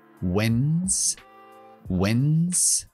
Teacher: Tiene una D muda que no se pronuncia.